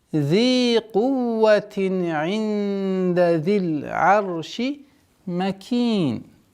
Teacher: долгота в размере двух огласовок кесра удлиняем